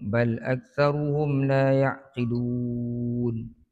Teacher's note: Mim mati bertemu dengan lam. Ini izhar syafawi. Kita baca tanpa dengung.